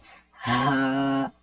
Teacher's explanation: یہ حلق کے نیچے والے حصے سے ادا ہوتا ہے، جیسے کہ ہمارے سینے سے ڈائریکٹ آواز باہر آئے